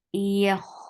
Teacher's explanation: Ya is very soft. The makhraj of ya is middle of your tongue raising towards the upper palate, but it will not touch the palate. So the tongue should be in a very soft position.